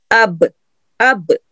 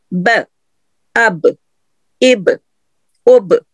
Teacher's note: جب آپ با پہ جائیں گی اب تو آپ کے ہونٹ، دونوں ہونٹ خود بخود آپس میں جڑ جائیں گے، اندرونی گیلے حصے جڑیں گے